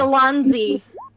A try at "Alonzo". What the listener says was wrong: Oh, Zo. Again, it's supposed to be an oh there.